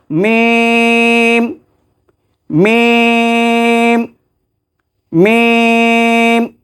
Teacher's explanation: মিমের মাখরাজ হলো যে ঠোঁটের বাহিরে যে শুকনো অংশ, এই শুকনো অংশ থেকে মিম উচ্চারিত হয়